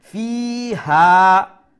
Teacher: fi is going to be stretched one alif long, ha is going to be stretched one alif long . So both of them one alif long stretching. Bi-idhni rabbihim